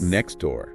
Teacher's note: If a native speaker says "next door," they rarely actually pronounce the T in "next." >> "Next [music] door." Yeah, I don't say the T at all. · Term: elision